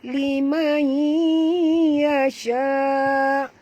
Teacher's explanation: Nun mati bertemu ya, masukkan bunyi nun ke dalam ya disertai dengung, idgham ma'al guna ya.